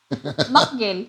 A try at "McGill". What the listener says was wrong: No, that's wrong. It's not MacGill, it's McGill.